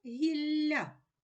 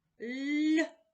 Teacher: зверни увагу м'який подовжений приголосний звук ль